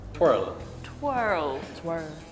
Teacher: where England kind of skips over the R sound, we go full on twirl